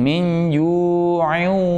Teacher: Ya, bacanya baca dengan dengung. Kalau dengung berarti masuk ke pangkal hidung.